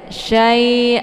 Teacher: huruf lin ya ataupun lain dibacanya. Ee ini cara bacanya dilembutkan saja syai. Jadi tidak perlu dipanjangkan